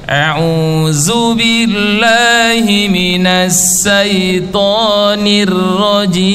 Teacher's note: Huruf sya diganti dengan sa. Huruf to diganti dengan ta. Ro harus tebal dibaca tipis